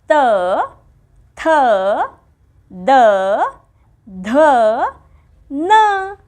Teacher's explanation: जिभेच टोक किंवा जिभेचा शेवट वरच्या भागाच्या दाताला लावून जे उच्चार केले जातात ती म्हणजे दंत्य वर्णमाला यामध्ये अक्षर आहेत त थ द ध न पाहिलंत जीभ कशी